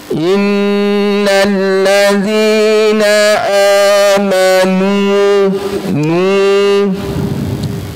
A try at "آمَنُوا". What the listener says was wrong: Ah, panjang. Ya, coba, bukan nazi. Huruf zal, di mana huruf zal? Di mana ada tempat huruf zal? Mana dia makhraj huruf zal? Ujung lidah dengan gigi seri atas. Keluar sedikit. Zi zi zi zi zi zi. Mana lidahnya? Keluarkan. Ha, zi Zi. Zi. Innal ladzina.